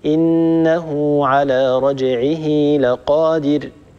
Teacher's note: ونمد الواو اللفظية ونمد الياء اللفظية بمقدار حركتين ونلحقه بالمد الطبيعي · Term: الصلة الصغرى